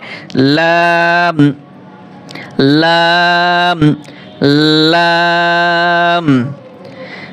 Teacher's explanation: উপরের দাঁতের মাড়ির সঙ্গে লাগিয়ে একটি হরফ উচ্চারিত হয়